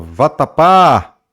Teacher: a sílaba que vai se estender, né? A última, o pá. Então, se é a última, oxítono. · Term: última sílaba tônica